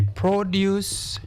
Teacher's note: The produce was expensive to produce. Because this word is preceded by the article the, it is a noun. Therefore, we stress which syllable? The first syllable.